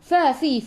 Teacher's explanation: gigi atas menyentuh perut bibir bawah